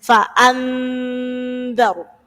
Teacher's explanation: Jadi ketika mendengung itu sudah sambil digigit ujung lidahnya. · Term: ikhfa